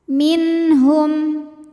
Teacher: ditahan didengungkan katir min min ada hukum izhar halqi ya karena nun sukun menghadapi huruf halq atau huruf tenggorokan yaitu ha maka nun sukun dibaca n jelas